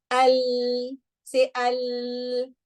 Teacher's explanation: So although your lip is touching the gums on the front of the lips, the front of the tongue is touching al, but you see that the sound is coming from the sides. So there's no blockage. Although there's part blockage, but part flow of sound.